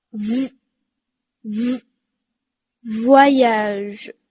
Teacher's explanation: 即使它后面有半元音，这个▁v▁的音还是要咬紧的哦